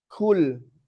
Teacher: Tapi kalau kita kasih angin jadinya kul. Kan kaf ada angin?